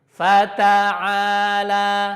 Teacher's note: Huruf ta-nya jangan tebal ya. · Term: tipis